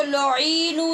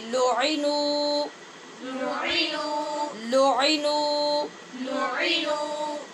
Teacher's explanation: نہ تو عین کو نیچے لمبا زیادہ کرنا ہے اور نہ ہی نون کو چھوٹا کرنا ہے، یعنی صرف پیش پڑھنی ہے۔